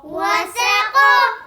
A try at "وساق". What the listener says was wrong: وساق وساق نا کیا غلطی کیا بھائی نے کیا غلطی کی ہے؟ کی سیٹی نہیں پڑی بھائی. وساق آپ نے اس کی مشق کرنی ٹھیک ہے.